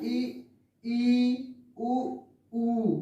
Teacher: ई उ बोल कर देखिए, आपका मुख द्वार जो है बिल्कुल संकरा हो जाएगा, लगभग बंद, जैसे बंद हो गया है ऐसा आपको महसूस होगा। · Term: समृद्ध स्वर